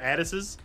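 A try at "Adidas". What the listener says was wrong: You missed the second D. Which is usually a big problem, I hear.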